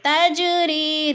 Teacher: جیم ساکن ہے اور حروف قلقلہ میں سے ہے تو اس لیے اس کو ہلا کر پڑھیں گے